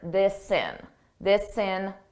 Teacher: I can take that S sound, and I can add it to the beginning of in because it begins in a vowel. This sin. And it sounds like one word, this sin.